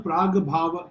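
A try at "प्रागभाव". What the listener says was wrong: Prag-bhava is Prag-abhava. Prag plus abhava, Jastvam, Prag, Ka becomes Ga, Prag-abhava.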